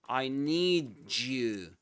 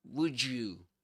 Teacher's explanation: when we combine the d with the y in the word you, we get ju. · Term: connected speech